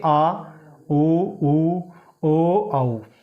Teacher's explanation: तीसरा जिह्वा के आधार पर पढ़ते हैं पश्च स्वर। वे स्वर जिनके उच्चारण में जिह्वा का पश्च यानी पिछला भाग क्रियाशील रहता है, उसको उन वर्णों को पश्च स्वर कहते हैं, जैसे आ, उ, ओ, औ।